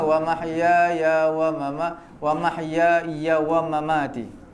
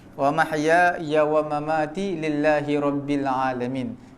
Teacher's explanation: ya yang pertama panjang, ya yang kedua pendek